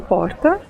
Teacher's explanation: há um movimento de retroflexão da língua em direção ao fundo da boca. É falado aqui em São José do Rio Preto, interior de São Paulo. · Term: R retroflexo